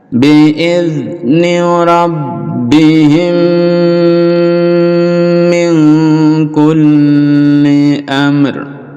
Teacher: Bi'izni rabbihim, kalau diteruskan ini ada bacaan mim sukun bertemu dengan mim, jadi dilebur jadi satu, idgham mimi, lalu didengungkan dan dipanjangkan dengungnya.